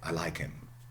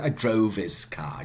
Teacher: In the pronouns, H is often silent when unstressed.